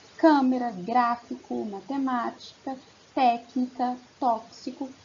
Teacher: a antepenúltima sílaba é a sílaba tônica, é a sílaba mais forte. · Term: proparoxítonas